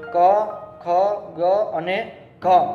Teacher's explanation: ક વર્ગ છે એ કંઠસ્થ, એટલે કે આપણા ગળા દ્વારા બોલવામાં આવે છે.